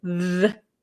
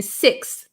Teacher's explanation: The TH that makes a sound, like a vocalized sound, the. And then there's a like kind of a breathy TH, like in sixth. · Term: vocalized TH